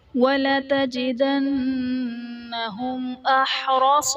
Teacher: وَلَتَجِدَنَّهُمْ میں میم ساکن کے بعد حرف با اور میم کے علاوہ حمزہ آ رہا ہے تو یہاں پر میم ساکن میں ہم غنہ نہیں کریں گے، قاعدہ اظہار شفوی کا ہوگا۔